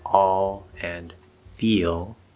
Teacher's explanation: L velarization, which is a fancy way of describing the dark L